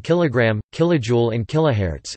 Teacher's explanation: The former follows a pattern in English whereby metric units are pronounced with the stress on the first syllable